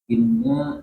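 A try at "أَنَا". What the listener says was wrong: Bukan inna, Pak. Kepala hamzanya di atas. Anna. Bukan anna, ana. Ana bukan anna.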